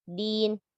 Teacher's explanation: Pada kata dinnya, sifat syiddah pada dal dijaga